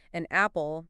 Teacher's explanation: linking where the last consonant of one word connects with the first vowel of the next word like an apple becomes a apple oh wow I never realized